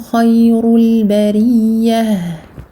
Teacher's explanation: Kha mufakhamah, ra mufakhamah. Donc, emphatique, on les gonfle bien.